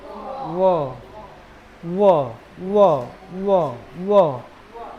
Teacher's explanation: व दांत और ओठ दोनों का काम है। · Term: दंतोष्